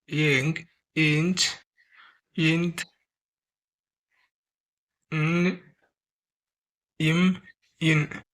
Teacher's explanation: இதை ஏன் நம்ம மெல்லின எழுத்துக்கள் அப்படின்னு சொல்றோம் அப்படின்னா, இது மூக்குலேருந்து பிறக்குது